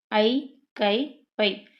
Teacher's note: தனித்து வரும் இடங்களில் தனக்குரிய இரண்டு மாத்திரை அளவில் முழுமையாக ஒலிக்கும்